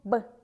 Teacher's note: губы закрываются и мешают воздуху свободно проходить